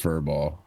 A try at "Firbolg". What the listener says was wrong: It's close. There is a G on the end.